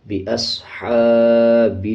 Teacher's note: صاد کو پر پڑھا جائے گا، یعنی صاد موٹے حروف میں سے ہے، اسی طرح جزم ہے صاد کے اوپر تو صاد کو پچھلے الفاظ کے ساتھ ملا کے پڑھا جائے گا۔